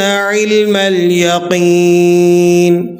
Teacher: یا ساکن ہے اور قاف کے نیچے زیر ہے، تو آپ نے اسے ایک الف تک لمبا کر کے پڑھنا ہے